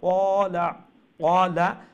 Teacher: ও যে হারকতের বেলায় কোনো জায়গাত মানে বিশেষ করে ওয়ার্ডের এন্ডে দিয়ে একটু লম্বা হয়ে যার, একবারে ফয়লা ওয়ার্ড দেখো কলা কলা ক লম্বা হইব, কিন্তু লা লম্বা হইতো না